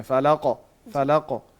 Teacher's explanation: جو اینڈ پہ قاف آیا ہے ساکن حالت میں آیا ہے اس کو موٹا کر کے قلقلے کے ساتھ پڑھنا ہے